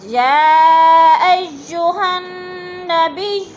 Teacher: حروف مدہ کے بعد حمزہ اسی کلمے میں ہے تو مد متصل، 4 الفی مد ہے، اس کو 4 الف کے برابر ہم نے کھینچ کر پڑھنا ہے